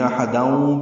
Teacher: پچھلی آیت کے ساتھ ملانا ہو تو ادغام ناقص ہے، غنہ ہوگا، یعنی احداؤں پڑھنا ہوگا۔